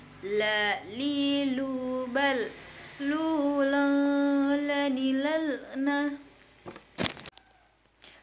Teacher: huruf la yang dikeluarkan dengan lidah menyentuh langit-langit bagian depan